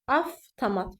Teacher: Tutaq ki, sözün ortasında VT samiti gələrsə, yəni bu birləşmə gələrsə, bu F kimi tələffüz olunmalıdır.